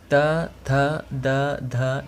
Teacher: त वर्ग में आते हैं त थ द ध न, जिसका उच्चारण स्थान है दंत। अब त वर्ग का उच्चारण करेंगे तो आपका ज़बान जो है वो आपके दांत को छुएगा।